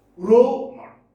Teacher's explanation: Stress is on the first syllable.